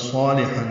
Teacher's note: صالحا ہے، صاد پر ہے، الف مدہ ہے، 2 حرکات لمبا ہے، لام باریک ہے